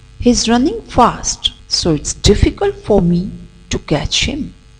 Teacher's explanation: running fast so it's difficult for me to catch him here running fast is stressed difficult and catch they are also stressed and rest of the words are unstressed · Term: sentence stress